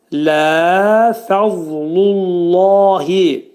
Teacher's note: dil 2 dişin arasına sol tərəfdən girərək ani tormuzlanma verəcəyik. Dad hərfinin qalınlığını bildirməliyik. Ondan sonra qalın hərfin məxrəcindən çıxıb incə hərfin məxrəcinə girməliyik.